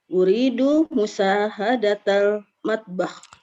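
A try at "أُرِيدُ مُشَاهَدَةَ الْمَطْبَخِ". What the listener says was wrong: Shinnya sepertinya kurang mantap nih. Ulangi sekali lagi. Musyahadat. Matbah. Ada makharijul huruf.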